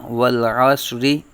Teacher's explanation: را کے نیچے زیر ہے، را باریک پر آ جائے گا